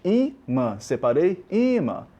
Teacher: Sílaba forte, o I. Paroxítona. Terminada em an.